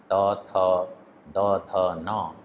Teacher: और तवर्ग के जो 5 वर्ण हैं त थ द ध न, वे 5 वर्ण दंत से उनका उच्चारण होता है अर्थात दांतों से, तो इसलिए वो सभी वर्ण दंत्य कहलाते हैं।